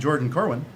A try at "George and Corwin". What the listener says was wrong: George and Corwin, not Jordan Corwin. You said Jordan Corwin.